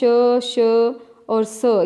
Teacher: श, श और स, ये सारे ही क्या हैं, अघोष हैं